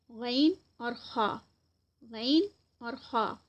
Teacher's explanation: سب سے پہلے ادنا حلق، اس میں جو لیٹرز آ رہے ہیں غین اور خا، غین اور خا۔ ادنا حلق جو ہے وہ حلق کا سب سے ٹاپ آف تھروٹ، یعنی حلق کا حصہ جو منہ کے قریب ہے، اور یہ غین اور خا وہاں سے ادا کیے جاتے ہیں